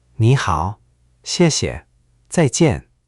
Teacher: Just now your first tone rose, your falling tones fell cleanly, and your neutral syllables stayed light